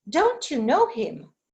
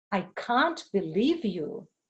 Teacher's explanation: auxiliaries in negative don't can't. So they become stressed because they deny everything.